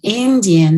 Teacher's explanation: the difference between what's coming out of the mouth with indian the e flows into the following nasal sound and in fact it is nasalized · the I flows into the following nasal sound and in fact is nasalized. So it's a nasalized vowel.